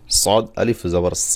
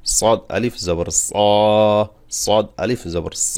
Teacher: সদ মোটা হবে জিব্বার গোড়া হালকা উপরের দিকে উঠবে এবং আইনের আওয়াজ পাবে কারণ সদ যদি মোটা না করেন তাহলে সদের জায়গায় সব সিন